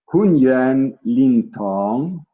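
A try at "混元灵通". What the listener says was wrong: Yeah, it's like tong. This you changed the second one. Tong. It's very straight.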